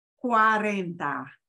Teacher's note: when you have CUA the U and the a have to be pronounced you know they'll slide together